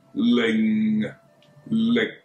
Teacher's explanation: 口型不变，但系▁NG▁就变咗▁K▁啦